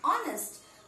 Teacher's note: So H is silent here. So though it begins with a consonant, but we are not having a consonant sound. We are having a vowel sound.